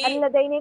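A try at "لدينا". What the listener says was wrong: अल लदैना नहीं है, वो सिर्फ लदैना है, लाम दाल या नहीं।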